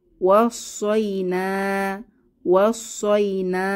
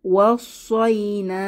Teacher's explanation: পরবর্তীতে আছে ওয়াসয়না, ওয়াসয়না, এখানে আমরা শেষে দেখতে পাচ্ছি আলিফ মাদ এক আলিফ টেনে পড়ব